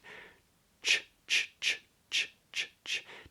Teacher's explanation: a ch is made with the body of the tongue close to the area just behind the back of the alveolar ridge, that bumpy ridge, about a centimetre or so back from the back of the top teeth.